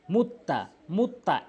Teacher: সেই হরফকে দুইবার উচ্চারণ করতে হবে সেই হরফের আগের হরফের সঙ্গে একবার এবং সেই হরফ দ্বিতীয়বার আরেকবার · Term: তাশতিদ